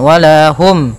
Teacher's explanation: mim mati bertemu dengan huruf ya, maka harus jelas suara mimnya, tidak boleh tahan. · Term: izhar syafawi